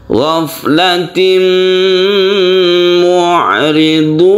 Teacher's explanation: Maka cara membacanya mad arid lisukun tersebut boleh 1, boleh 2, boleh 3 alif. Yang itu setara dengan 2 harokat atau 4 atau 6 harokat.